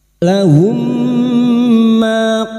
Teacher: idgham mimi memasukkan atau mentasdidkan dua mim masuk pada huruf mim berikutnya disertai mendengung selama tiga harakat